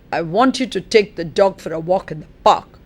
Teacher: park is the tonic syllable